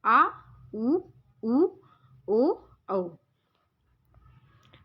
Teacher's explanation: जिन स्वरों के उच्चारण में जिह्वा का पिछला भाग उत्थापित होता है उन्हें पश्च स्वर कहते हैं